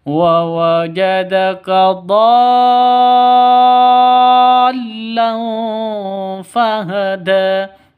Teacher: samar disertai dengung siap-siap ke huruf Fanya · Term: ikhfa